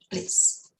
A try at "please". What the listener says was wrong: So remember that the S in that word is a Z sound, right? Not police, because it sounds like police. Policia. Please, zebra. Please, zebra. Please.